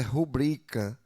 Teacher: A palavra rubrica ela é paroxítona